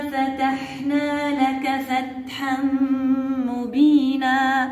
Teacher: عندنا الهمس في التاء، وعندنا نون بعد منها حرف الميم، إدغام تام وبغنة.